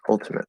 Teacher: it's the upside down V, which is what I call the not true schwa, but it's the same as the schwa sound.